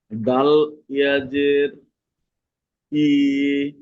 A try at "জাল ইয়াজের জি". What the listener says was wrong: এটা দাল নয়, এটা হলো জাল।